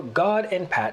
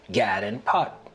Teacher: the lot trap vowels are reversed for god and pat to sound like gad and pot